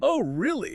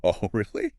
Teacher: The pitch went high, the speed was fast, the energy shot up.